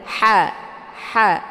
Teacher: ada suara yang mendesah keluar dari tenggorokan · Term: ha kecil